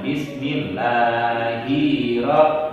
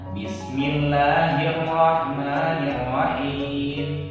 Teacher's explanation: ketika kita membaca basmalah itu tidak panjang, hi dan mi-nya